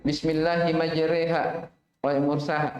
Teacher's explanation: mila dibaca tipis karena sebelumnya huruf harokat kasroh